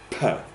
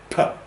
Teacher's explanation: So I hold the air behind my lips, okay, and then I suddenly release it. So p, like that. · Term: p sound